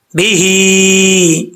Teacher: ہا کے نیچے کھڑا زیر ہے، اس کو ایک الف کی مقدار لمبا کریں گے